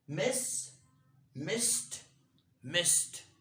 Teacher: whenever your verb ends with s then you'll have to pronounce it t not d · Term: t sound